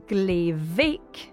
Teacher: In glevik, very small, the B of bake changes to V.